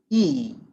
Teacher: it is not rounded fine it is a spread e · So see, the front part of the tongue is used for the sound E. So E is a front, close and unrounded vowel.